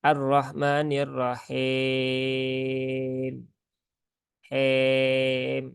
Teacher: Jadi harusnya him ya. I berarti dia menurunkan rahang, bukan menjadi e.